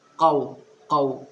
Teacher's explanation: دوسری غلطی یہاں پر واولین ہو رہا ہے، اور واولین نرم آواز کے ساتھ میں جلدی پڑھا جاتا ہے